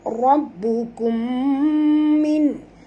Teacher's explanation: mim mati bertemu mim, idgham mislain, wajib dengung